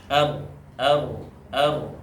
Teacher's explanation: bergetarnya ujung lidah ketika mengucapkan huruf Ra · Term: takrir